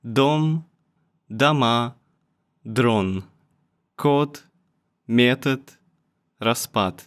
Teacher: D sounds like T when it's right at the end